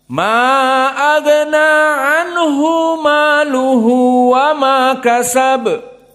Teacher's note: Ada 2 mad silah, dua-duanya harokatan.